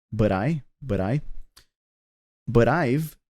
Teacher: the T in but becomes a flap T so it'll have a D sound